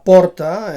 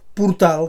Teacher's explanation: La O oberta de la paraula porta, en posició tònica, en síl·laba tònica, es converteix en U en el seu derivat portal, que ocupa la posició àtona en aquest cas. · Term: reducció vocàlica